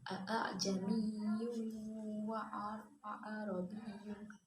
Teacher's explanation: Selanjutnya, a'jamiyyun wa arabiyyun disebut dengan bacaan tashil karena terdapat dua hamzah yang berjejeran. Untuk membaca hamzah pertama itu biasa, sedangkan hamzah yang kedua yaitu samar-samar.